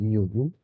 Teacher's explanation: man spricht dann eben von geschlossenen Vokalen das sind i und U und einem offenen Vokal a